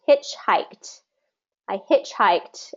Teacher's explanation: this is a compound noun, so first syllable stress. Remember, when we have compound nouns, we always stress the first syllable.